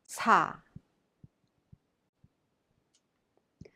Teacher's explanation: Sa is a little aspirated as the tongue touches behind the gums in between S and C